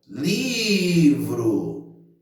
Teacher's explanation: A sílaba tônica é o li, que é onde eu demorei mais na hora que eu chamei a palavra.